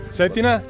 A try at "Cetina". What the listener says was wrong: Cetina. No, Cetina. C, not a Z.